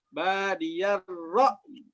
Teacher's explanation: Ra ketemu dengan hamzah ya ra'i seperti ada putus ya.